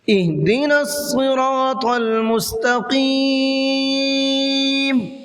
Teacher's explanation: صاد کو تھوڑا سا موٹا کر کے پڑھنا ہے، منہ بھر کے پڑھنا ہے